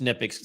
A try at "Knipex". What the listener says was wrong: No, I think it's Knipex. I watched a video of a worker that worked for them, and they pronounced it with the hard K.